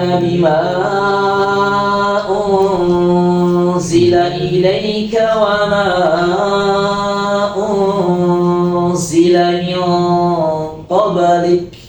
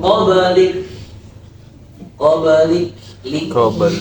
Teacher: jadi qalqalahnya tetap mantul tapi tidak berat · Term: qalqalah sugra